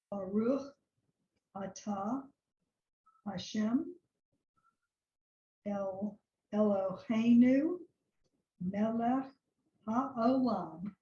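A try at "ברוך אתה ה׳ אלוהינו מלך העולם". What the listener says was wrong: Yes, you got it. Excellent.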